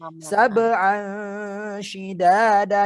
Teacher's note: Fathaten bertemu dengan sya. Ikhfa hakiki, maka bacanya harus disamarkan. Sab'an shidada, dimasukkan ke huruf sya.